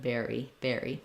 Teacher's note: of an if not bear or Bara but berry berry so even though it's unstressed it still has that tense e sound